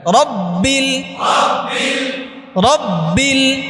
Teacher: রব্বিল, বায়ের একটু গুনগুন রাখবেন